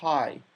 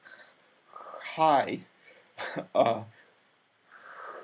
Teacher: in Chinese we constrict the throat a bit more than in English.